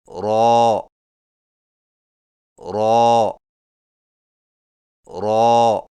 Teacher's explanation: را کی ادائیگی میں زبان کی نوک کی پشت کو اوپر والے دانتوں کے مسوڑوں سے لگا کر موٹی آواز میں پڑھیں، یعنی را را را۔